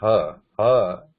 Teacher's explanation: there is no touch, but the back of the tongue is compressing the air in the throat there, deep in the throat